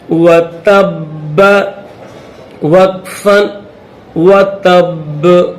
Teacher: آخر میں با کو اس میں ظاہر کریں گے تھوڑا سا، کیونکہ یہ حروف قلقلہ ہے، اور حروف قلقلہ اگر آ جائے تو اس میں آیت کے درمیان میں آ جائے یا آخر میں آ جائے وقف کریں تو اس کو ظاہر کر کے پڑھا جاتا ہے، جیسے یہاں پر اس با کو پڑھا جائے گا۔